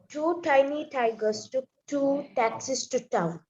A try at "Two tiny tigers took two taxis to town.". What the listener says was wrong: Okay, better.